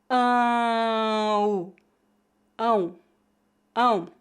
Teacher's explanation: Note que devemos pronunciar as duas vogais a vogal nasal é forte e a vogal oral é bem fraca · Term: ditongos nasais